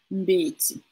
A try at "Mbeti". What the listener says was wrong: Exactement. Bravo.